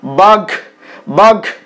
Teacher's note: ঘ যে মহাপ্রাণ ধ্বনিটা সেটা গ এর মত উচ্চারিত হচ্ছে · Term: ক্ষীণায়ন